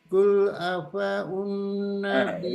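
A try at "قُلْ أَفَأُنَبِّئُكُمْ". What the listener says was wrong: Itu udah berbagi dengan Hamzah, jadi nggak boleh panjang. Qul afa'unabbi'ukum.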